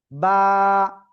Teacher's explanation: দুই ঠোঁটের ভিজা অংশ থেকে এক আলিফটা নিয়ে উচ্চারণ করব